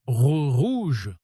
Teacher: Ici, le R est plus marqué parce qu'il est au début du mot. Si vous prononcez rouge comme un espagnol en mode rouge enroulant le R comme en espagnol, ça sonne faux tout de suite. Et si vous le dites comme un anglais en mode rouge avec un R doux et arrondi pareil, ça ne passe pas.